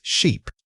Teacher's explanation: you need to stretch that e sound out fully. Your mouth needs to create a wider, more sustained opening than the previous word.